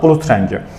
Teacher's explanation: Rəngi sözündə R samiti, yəni samit gəlir. O zaman D-miz öz kar qarşılığına keçir.